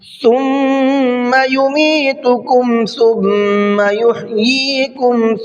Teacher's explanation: ثم کے میم پر تشدید ہے تو غنہ کر کے پڑھیں گے۔